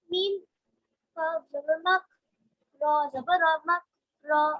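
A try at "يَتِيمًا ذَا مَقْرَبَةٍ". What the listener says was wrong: Okay, you are skipping Aqalqala, okay? Maqrabatin.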